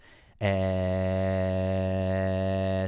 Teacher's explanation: let's take the vowel e as an example so e so there's a spike in frequencies around a little less than 2,000 HZ and and another one between like around 600 or 700 Hertz